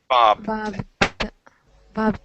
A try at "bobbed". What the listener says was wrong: give me a d you're saying Bob okay with a t we want Bob bobbed